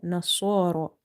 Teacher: Swad is from the musta'aliya letters, that's why we are reading it heavy. And ra is heavy because of having vertical fatha on top of it.